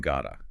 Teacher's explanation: the T to D voicing change in gada